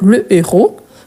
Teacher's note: héros, c'est un H aspiré. On ne peut pas faire ni élision, ni liaison.